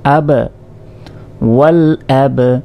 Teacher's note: কলকলা বা প্রতিধ্বনির মতো উচ্চারণ করতে হয়, অর্থাৎ এক অক্ষর দুইবারের মতো উচ্চারণ হয়